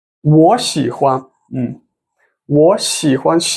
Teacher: video 我 and the 喜 they both are the third tones when they come together the first character the pronunciation of the first character will change into the second tone